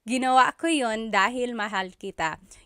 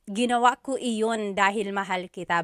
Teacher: You might hear me saying yun, as if there's no I, and that's commonly how it's pronounced.